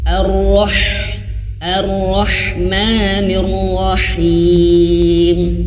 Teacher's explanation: huruf H di kalimat basmalah itu harus mengeluarkan angin yang kecil, yang tipis.